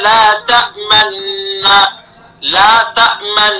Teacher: नून को तशीद और गुना से अदा करते हुए असल की तरफ इशारा करने के लिए नून की पहली आवाज में होठों को गोल कर लेना · तो इगाम इस्माम का ये तरीका है कि पहला जो नून है इगाम तो कर दिया लेकिन वहां हमें क्या करना है? इगाम के साथसाथ असल जो हरकत है पेश उसकी तरफ होठों से इशारा करना है